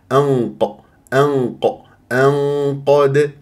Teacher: انقد هكذا ما تقول لي انق يعني جبت انت غنه مرققه لابد ان تاتي بغنه مفخمه بحسب مرتبه القاف بعدها والدال مقلقله قلقله صغرى في وسط الكلام لانها مرتبطه بكلمه وجدنا